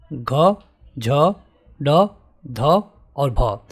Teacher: जिनके उच्चारण में अधिक मात्रा में हवा बाहर निकलती है इनको हम कहते हैं महाप्राण